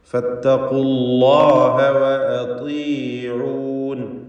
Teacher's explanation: താഇന് കസ്റ ആയതുകൊണ്ട് ഏറ്റവും കുറഞ്ഞ തഫ്ഖീമാണ് വരിക